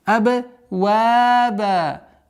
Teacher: при остановке танвин аннулируется и уходит в естественную долготу.